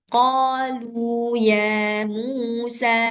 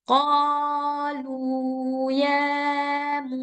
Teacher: Dua harkat itu cukup satu ketukan aja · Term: mad asli